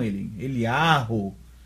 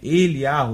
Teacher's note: Aqui, no hebraico moderno, nós vemos que o Kames tem som de A, um A longo. Aí, daí o nome Yahu, que hoje até os judeus falam Eliyahu, né?